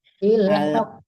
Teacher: Ditahan dulu ya, doang ya, soalnya qafnya bertasdid ya. Bil haqq. Ditahan dulu, kalau bil haqq langsung jadi hilang tasdidnya.